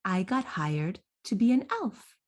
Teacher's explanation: do you hear how elf is going up into the place of prominence in that sentence?